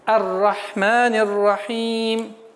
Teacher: с фатха переходим сразу на букву Ра, так как буква Ра является солнечным звуком и твердый звук.